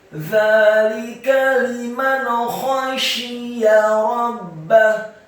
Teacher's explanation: Kata liman, lamnya dibaca tipis, kasrah satu harokat, mimnya dibaca fathah satu harokat, nun yang sukun bertemu dengan huruf kha. Hukum bacaannya adalah ilhar halqi atau ilhar hakiki, dibaca jelas.